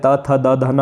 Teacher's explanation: अगर हम दंत्य की बात करें, त थ द ध न, वो सारे दंत्य होते हैं